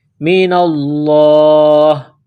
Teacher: جب یہاں سٹاپ کریں گے، وقف کریں گے تو ہا کو سائلنٹ کریں گے